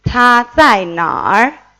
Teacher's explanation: El tercer tono en nar hace que tengamos el pronombre interrogativo.